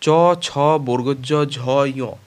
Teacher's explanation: এই ব্যঞ্জন ধ্বনিগুলি উচ্চারণের সময় জীভের মধ্যভাগ তালু স্পর্শ করে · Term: তালব্য ধ্বনি